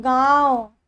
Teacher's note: नाक और मुंह दोनों से इसकी उच्चारण स्थान इसका निकलता है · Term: अनुनासिक